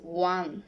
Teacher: Characteristic bilabial, glide, and voice.